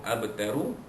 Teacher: Tar, kalau kita wakafkan tar, ra sukun tu dibaca tebal, rutan balik atas sebelumnya. Kalau kita sambung abtaru, ru itu dia pun dibaca tebal kerana ianya baris di hadapan.